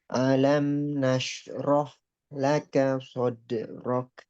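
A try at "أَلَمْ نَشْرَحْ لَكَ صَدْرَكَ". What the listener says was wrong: Nah, A-nya jelas, jangan alam, jangan sampai A, ain, tapi A. Alam, alam nashrah laka sadrak.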